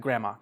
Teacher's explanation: native speakers, you don't really say the D, you just say like grandma